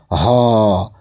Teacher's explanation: হ ওই কন্ঠের মধ্যে সীমাবদ্ধ থেকে যাচ্ছে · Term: কন্ঠনালীয়